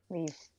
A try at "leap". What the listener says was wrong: Leap. It's a P at the end.